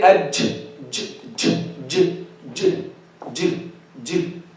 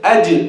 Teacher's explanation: There's no breath with the Jeem. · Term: qalqala